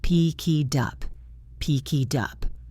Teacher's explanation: We have the word pick, then it, then up. The K links to the I. The T flaps and links to the U.